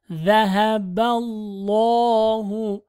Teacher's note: كمثل الذي استوقد نارا فلما أضاءت ما حوله ذهب الله not ذهب الله or ذهب الله is the with the tip of the tongue ba with the lam of lafzatullah here ba has fatha that's why this lam is heavy